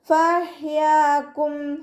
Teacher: ഹ വസത്തുൽ ഹൽക്കാണ് മഖ്റജ്, തൊണ്ടയുടെ മധ്യഭാഗം.